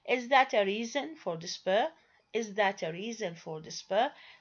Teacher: They are said with the rising tone that just like the normal yes no question that we learned, but the meaning here is not asking.